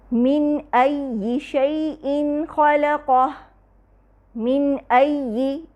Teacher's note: من اور أَيِّ کے درمیان اظہار حلقی ہو رہا ہے